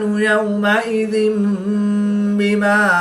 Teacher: 2 زیر کی تنوین کے بعد حرف با ہے تو یہاں پر اقلاب ہوگا، یعنی تنوین کو میم سے بدل کر غنہ زمانی کر کے پڑھیں گے